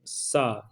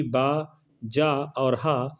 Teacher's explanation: जो अघोष वर्ण है वो है सा, जबकि बा, जा और हा ये कैसे हैं? सघोष वर्ण हैं।